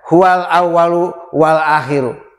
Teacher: Contoh al menghadapi hamzah, huwal awwalu wal akhiru. Lamnya dibaca jelas dan tidak boleh dipantulkan. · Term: idhar qamariyah